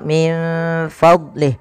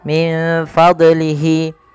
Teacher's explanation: Huruf dot salah satu huruf yang tidak boleh mantul, yang dimana contoh min fadlih, tidak boleh min fadlihi ya, tidak boleh.